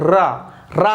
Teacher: जो आपकी जीभ की नोक होती है, रा रा बोलोगे तो वाइब्रेट कर रही होगी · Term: प्रकंपित